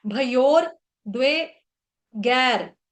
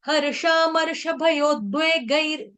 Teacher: ये जो रसायन का रो है ना, ये वाला रो, ये आपने गई के बाद बोलना है, भयो के बाद नहीं बोलना है, लेकिन अक्सर गलती से फ्लो फ्लो में भयोर निकल जाता है।